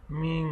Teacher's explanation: নুন জের মিন নুন সাকিনের পরে ইকফা হরফ কফ আসছে এজন্য এখানে নাকের ভিতরে নিয়ে নুন সাকিন গুণ করে পড়তে হবে